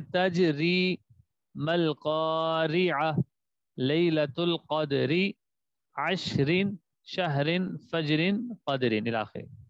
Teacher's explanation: را کے نیچے زیر آ جائے، دو زیر آئے، را کو باریک پڑھیں گے